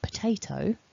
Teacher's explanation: we can see that the stress is on the Tay · we can see that the stress is on the te, and we have the at the beginning of the word, potato, to create that weaker syllable so that the te can be stronger. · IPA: /pəˈteɪ.təʊ/